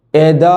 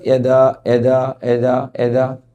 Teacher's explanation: തബ്ബത്ത് യദാ എന്ന യാ പറയുമ്പോൾ അതിൻ്റെ മഖ്റജ് നാവിൻ്റെ നടു മേലെ അണ്ണാക്കിലേക്ക് ഉയർത്തിയിട്ട് യ പറയണം. കുറേ ആളുകൾക്ക് നമ്മുടെ ഖുർആൻ ഓതുമ്പോൾ യാന് ഫത്ഹോട് കൂടി വരുന്ന സമയത്ത് യാ തീരെ പറയാതെ എദാ എന്ന് പറയും.